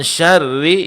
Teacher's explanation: sedangkan syarri ini ditipiskan karena dia berbaris kasrah